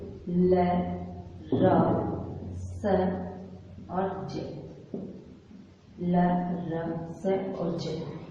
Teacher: ये चारों वर्ण ऐसे हैं, जब हम इनका उच्चारण करते हैं तो हमारी जिह्वा का अगला जो हिस्सा है वो आगे के मसूड़ों को टच करता है। जिसे हम इनका उच्चारण करेंगे ल, तो झटके से आगे के मसूड़े को टच करेगा, र तब भी टच करता है, स बोलेंगे तब भी करेगा और ज बोलेंगे तब भी करेगा, और इसीलिए इनको हमने नाम दिया है वर्ष।